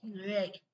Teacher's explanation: ழாங்கிற எழுத்து இந்த உள்ள அன்னத்தை நல்ல அடிப்பகுதியை வரணும், தொடாது. பட்டும் படுமாமலும் நாக்கு நல்லா வளையும் போதுதான் இந்த ழகரம் பிறக்கிறது.